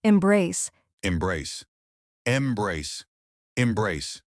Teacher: two syllables, stress on the second part